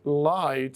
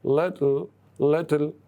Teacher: when we say light, so the la is strong here, but when we say little, so the la comes finally, it's weak.